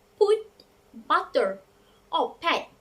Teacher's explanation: we have to bring our lips together briefly to produce the initial sound